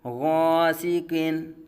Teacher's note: عابدن عابدن، الف سے پہلے عین باریک حرف ہے، الف کو باریک پڑھا جائے گا۔ غاسقین، غین حرف مستعلیہ میں سے الف کو پر پڑھا جائے گا